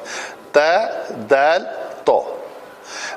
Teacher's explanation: تا پتلا ہے، دال پتلا ہے، اور تو جو ہے وہ موٹا ہے. اس کی آواز میں ذرا بھاری پن ہے. تا دال تو. دیکھا میرے منہ کا زاویہ ایک دم تبدیل ہو گیا. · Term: حروف نتعیہ